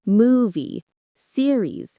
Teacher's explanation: When saying movie or series, make sure to stress the first syllable.